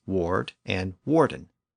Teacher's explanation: the Normans retained the Germanic W sound at the front